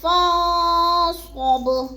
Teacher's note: آواز کو ناک میں چھپا کر پڑھنا ہے، فا کو ہم نے نون کے ساتھ ملا کے پڑھنا ہے۔